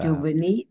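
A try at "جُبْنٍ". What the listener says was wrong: Tanwin, Tanwin karena gak mudhof ini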